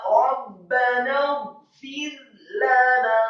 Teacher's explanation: lamnya yang fathah satu harokat, kemudian nunnya yang fathah dua harokat. Kemudian kita wakafkan sampai Rabbana fir lana.